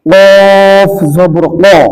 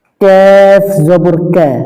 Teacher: কফ জবর ক, মোটা হবে। কাফ জবর কা, পাতলা হবে। কাফ আর কফ অনেক সময় মিলে যায়, এই জন্য খুব খেয়াল করতে হবে।